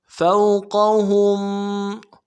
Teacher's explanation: الی الطیر فوقہم، فا کو واو کے ساتھ ملانا ہے، بغیر کھینچے پڑیں گے، قوف کو موٹا ادا کرنا ہے، ہا کو میم ساکن کے ساتھ ملانا ہے، میم ساکن میں غنہ کریں گے۔